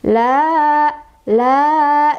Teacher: Sebabnya karena ada fathah berdiri di atas huruf lam ya. Artinya kita baca dipanjangkan sebanyak dua harokat. La, la, gitu.